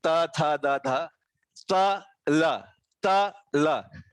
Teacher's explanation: त में आप दांतों के ऊपर जीभ से जोर से दबाव देते हैं तब त का उच्चार होता है, और ज्यादा देर तक दोनों एक दूसरे के साथ स्पर्श में रहते हैं। ल के लिए बिल्कुल जीभ दांतों को छू कर निकल जाता है तब ल का उच्चार होता है। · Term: दंत्य अक्षर